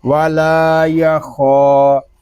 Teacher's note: اور لام کو بھی ایک الف تک کھینچ کر پڑھیں گے، خا کو پر پڑھیں گے کیونکہ یہ حروف مستعلیہ میں سے ہے